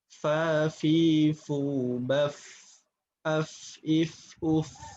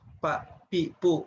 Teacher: Maka ujung gigi seri atas ini ditempelkan ke bagian dalam yang basah dari bibir bawah. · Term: huruf fa